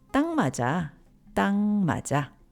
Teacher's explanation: When said alone, everyone pronounces it 딱. But when it's followed by a nasal sound like 맛 in 맞아, people often pronounce it as 땅